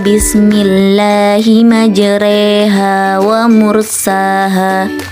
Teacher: Pada dasarnya, setiap alif yang berharokat fathah dibaca a, namun khusus pada lafaz majreha dibaca e sehingga bunyinya menjadi majreha.